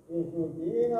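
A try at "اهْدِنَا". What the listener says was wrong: Haknya Ustaz, jangan dipantulkan. Ihdina.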